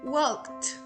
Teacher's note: The T is blended together with the previous consonant and is not pronounced as an extra syllable.